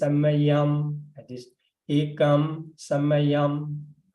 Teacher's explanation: And nigahita, in that case, you need to close your mouth after pronouncing the nigahita